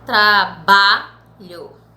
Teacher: o ba de trabalho, ele é pronunciado com uma força bem maior, com uma tonicidade mais forte. Então, o ba é a sílaba tônica. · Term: paroxítona